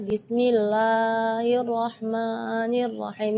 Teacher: Berlebihan dari segi madnya. Jadi bismillah itu kepanjangan.